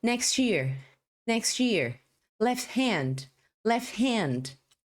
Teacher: os sons finais aí eles foram engolidos pela palavra que veio depois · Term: connected Speech